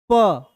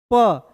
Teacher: ये दोनों होठ जो है ये आपस में क्या हो रहा है, चिपक रहा है ना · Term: ओष्ठ